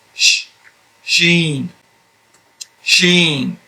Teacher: your tongue is behind the teeth and then your lips go into a sort of a square